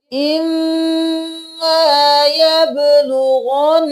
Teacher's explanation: میم پر تشدید ہے نون پر بھی تشدید ہے دونوں پر غنہ ہوگا